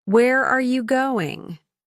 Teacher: This is a question that starts with where, and the pitch falls at the end. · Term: Falling intonation